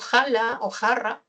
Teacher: El fonema fricativo velar, sordo, ja